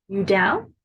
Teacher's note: instead of saying are you down we say you down with that Rising intonation at the end you down that means are you interested can you doubt or